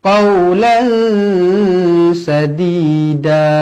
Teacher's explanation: tanwin yang tidak selari bertemu dengan huruf Sin hukumnya ikhfa Hakiki wajib dibaca dengung dua harakat